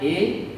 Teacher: ये दो स्वर, ये दो स्वर दो मिश्रित इस पर स्थानों से यानी कंठ और तालु से मिलकर उच्चारित होते हैं, इसलिए इन्हें कंठ तालव्य कहा जाता है।